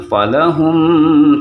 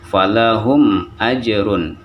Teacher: mim mati bertemu dengan alif tidak kita dengungkan membaca jangan follow hmm tidak tetapi falahum ajrun karena dia mematikan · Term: izhar syafawi